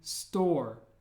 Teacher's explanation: it's a very rounded o sound like we have to really make an o with your mouth